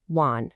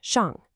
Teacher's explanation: the third tone, wan, is a low dip and rise. The fourth, shang, is a sharp, sudden drop.